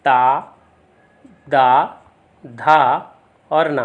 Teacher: ता, दा, धा और ना, तो ये सभी जो है दंत वर्ण होते हैं